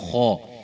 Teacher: جو ہی آپ خا کریں گے، خا، تو آپ کو محسوس ہوگا کہ آپ کی زبان کی جو جڑ ہے، زبان جو ہے وہ اوپر کے تالو کی طرف اٹھی ہے، تو اس وجہ سے یہ حرف خا موٹا ہوا ہے